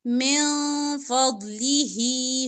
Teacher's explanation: من نون ساکن کے بعد فا اخفا نون کو یہاں پہ آپ نے سائلنٹ کرنا ہے